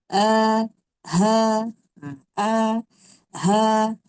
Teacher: Pangkal halkum ni ada huruf hamzah dan ha